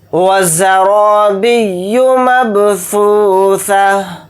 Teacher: را کو موٹا یعنی پر پڑھیں گے کیونکہ را کے اوپر زبر ہے، تا کو ہا ساکن بنا کر پڑھیں گے حالت وقف میں۔ · یہاں پر ثا کی آواز بنا سیٹی کے نکالنی ہے، یعنی نرم اور باریک۔